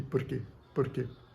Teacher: a ponta da língua ela dá uma uma chicotada nos alvéolos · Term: flep